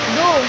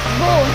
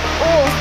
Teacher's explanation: Unlike English, where the O sound is given prominence over the U sound in Mandarin, the O and U are given equal prominence.